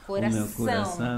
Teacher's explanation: conseguem o problema que na hora que estão falando não fazem a ênfase na sílaba forte que seria no caso essa sílaba nasal como coração ó coração tem que dar ênfase no ão aí